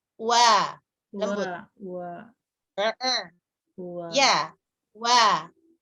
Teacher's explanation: Monyongkan, wa pertama itu monyong tapi dikit, tapi nggak nutup.